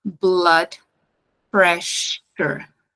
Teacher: esse SS vai sair igual o nosso o fonema x do português então tem que ter esse chiado